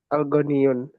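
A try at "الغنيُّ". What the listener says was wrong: al-ghaniyu. Nggak pakai tanwin lagi ya sekarang. Al-ghaniyu. Al-ghaniyu.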